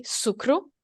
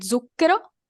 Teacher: in French dialect and English, the S is voiceless, is a voiceless sound, while in Italian, zucchero begin with a Z, so it's a voiced sound